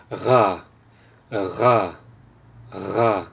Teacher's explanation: the default pronunciation of the R sound in standard French is a voiced uvula fricative. So what that means is that as I said, you're bringing the back of your tongue closer to the uvula, and the air flows in between the uvula and the back of your mouth.